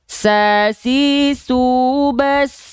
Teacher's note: Huruf sin tuh, dia punya sifat hams tapi dia mengalir nafas, Bang. Sasi subas itu dia mengalir nafas.